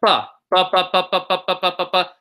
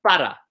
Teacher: P's, same as English, but not aspirated. So not pa, but pa.